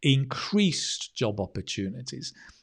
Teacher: the reason I say increased with the stress on the increased is because you're contrasting it to what somebody said before about scarcity of job opportunities.